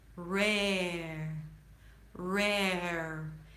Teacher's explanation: It's difficult, but the secret here is to start strong, re, as if you're about to say red, red, but after you're done with the e, re, then you lift the tongue up to a very, very soft R